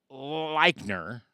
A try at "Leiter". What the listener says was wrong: No N.